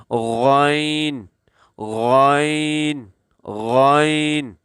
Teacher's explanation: غین جو ہے وہ گلے کے شروع والے حصے سے جو منہ کی طرف ہے، یہاں سے یہ غین ادا ہوتا ہے، جیسے غین، غین، غین۔